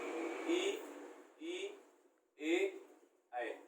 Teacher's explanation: इनका उच्चारण हमारे जीभ के अग्रभाग से होता है, तो ये क्या कहलाएंगे, हमारे अग्र स्वर।